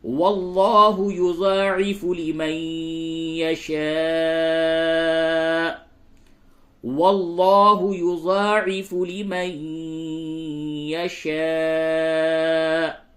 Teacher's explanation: واللہ میں لام کو پر کیجئے